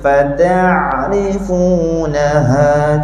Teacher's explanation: Masa kita sebut fatah, huruf ain ni kita tak nak bunyi putus, tak nak bunyi fatah, nak bunyi hidup.